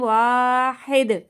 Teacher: دال کی آواز پلٹ کر آئے گی